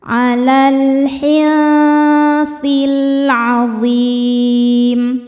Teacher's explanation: alif lam menghadapi huruf qamariyah yaitu ain. Cara bacanya lam dibaca idhar atau jelas. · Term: alif lam qamariyah